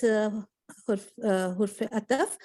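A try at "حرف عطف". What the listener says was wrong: Okay, I do not wanna hear hurf. Hurf is not any word. Harf.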